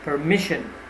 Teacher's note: you have to stress on mish